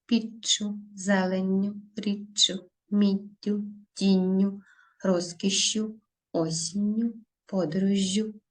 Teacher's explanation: відбулося подовження між двома голосними подовження у вимові відбувається А на письмі відбувається подвоєння пишемо 2 однакові букви